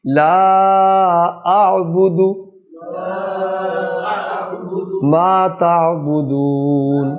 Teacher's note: دال کی جو پیش ہے یہ لمبی نہ ہونے پائے، یہ اعبدو نہ بن جائے کہیں.